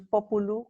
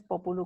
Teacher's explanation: Uno es populu con vocal posterior media larga y otro es populu con vocal posterior media breve.